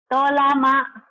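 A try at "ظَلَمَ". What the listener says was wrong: Salah, ada titiknya mah. Zolama.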